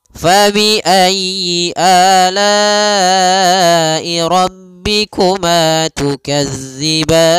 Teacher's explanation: Di sini jangan dibaca dengan za, jangan tukazzi, tapi tukadziban. Panjang ban boleh 2 harokat, boleh 4 harokat, dan boleh pula 6 harokat karena dia mad arid lis sukun